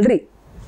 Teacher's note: ल बोलते समय पर देखो दांत हमारे ल जबान जो है वो दांत में टकराती